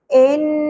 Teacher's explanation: نون مشدد غنہ ہوگا. ان، لیکن زبر کو زیادہ نہیں کھینچنا.